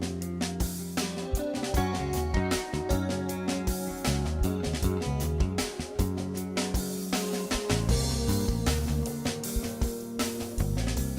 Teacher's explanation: Now that Kardashian sound is called vocal fry. So named because it sounds like frying bacon and eggs. It's an unhealthy sound that warrants immediate attention.